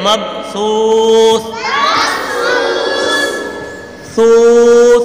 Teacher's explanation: مبثوث کو پڑھتے ہوئے سا کا خیال رکھنا ہے، سی نہیں پڑھنا. سیٹی کی آواز بالکل بھی نہ نکلے. مبثوث، ثوث، سیٹی کی آواز نہیں نکالنی ورنہ غلط ہو جائے گا.